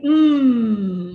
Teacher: all the lung air moves out through the nasal passage there is no air that moves out through the oral cavity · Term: nasal sounds